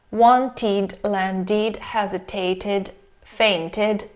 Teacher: We read ed as id after t and d.